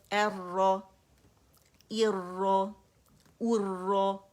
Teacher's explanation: یہ جو را کا جو لرزہ ہے یہ ہونا چاہیے لیکن ار کی ساؤنڈ نہیں ہونی چاہیے